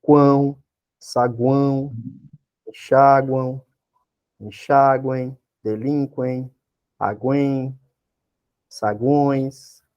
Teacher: E o tritongo pode ser nasal, o som passa pela boca e pelo nariz